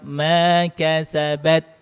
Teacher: tekan ujung lidahnya yang kuat ke pangkal gigi seri atas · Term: huruf ta